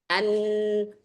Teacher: Ya karena memang betul bahwa ketika nun kita tasdidkan, ketika mim kita tasdidkan, bukan berarti penekanan di makhrajnya, tetapi dia punya makhraj lain yang mana di situ adalah suara yang mengalir ketika misalkan an, maka ada suara dari khaysum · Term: gunnah